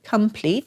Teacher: that o has a little bit of a lazy sounding schwa sound